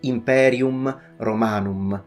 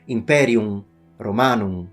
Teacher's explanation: in italian the m at the end of words would always be strongly pronounced and fully pronounced · This M, fully pronounced M, is specifically considered by ancient Roman language teachers and Latin teachers as something a barbarian would do. To pronounce it like a real Roman, you need to pretend that the M is not there, which is interpreted by linguists as being fully nasalized.